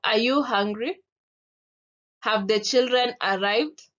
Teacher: Rising intonation and it can be used in the general yes or no questions